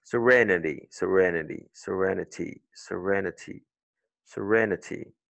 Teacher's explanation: Le son court de I, n'oublie pas, c'est E, comme un E accent aigu court. E. Donc, tu dis serenity.